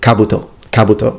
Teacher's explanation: please notice that the accent is on the first vowel Kabuto Kabuto as we Italians tend to put the accent in